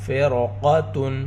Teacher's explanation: قاف حروف مستعلیہ میں سے ہے اور یہاں پر تفخیم کا دوسرا درجہ ہے، قاف کو موٹا کر کر پڑھیں گے